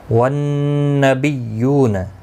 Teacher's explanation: نون مشدد پر غنہ ہوگا، غنہ کے ساتھ پڑھیں گے، باقی کسی بھی حرکت والے حرف کو کھینچنا نہیں۔ · واو مدہ ہے، ایک الف کی مقدار کے برابر کھینچ کر پڑھیں گے